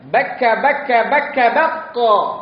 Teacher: dia di pangkal lisan, pangkal lidah.